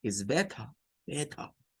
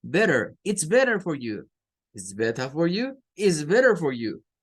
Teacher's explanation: Bueno, pues los norteamericanos no lo dicen así. No pronuncian tampoco esa T. Le tiran más a una R. Entonces usted va a escuchar a un norteamericano decir better.